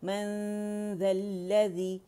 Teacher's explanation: من ذا، اخفاء کا کیا رول ہے کہ نون کو چھپائیں گے، غنہ ریٹین کرتے ہوئے رائٹ اوے ذال کے مخرج پہ جائیں گے، ٹچ نہیں کریں گے